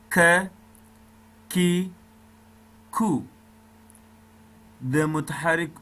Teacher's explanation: د خولې و طرف ته اقصای لسان د لوړ تالو سره مشلي، دلته کاف ادا کېږي. دې کاف ته حروف لهاتیه ویل کېږي، لکه څرنګه چې قاف ته ویل کېدل.